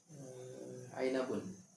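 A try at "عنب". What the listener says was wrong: Inab. Inab. Bukan ainab kan? Oh iya, inab.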